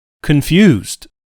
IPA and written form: kənˈfjuːzd (confused)